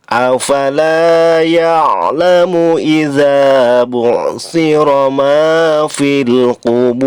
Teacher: Fil kubur, fil alif lam qamariyah, kubur bur dipanjangkan maksimal 6 harokat, madari disukun. Di ujungnya ada huruf ro. Ro-nya harus dibaca tebal atau tafkhim.